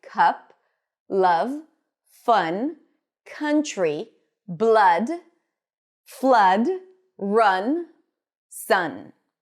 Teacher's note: It's the most common vowel sound in American English, but the cup sound is slightly more open and it's always stressed. And because it's stressed, it's usually longer a little bit and a bit more emphasized. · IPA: /ʌ/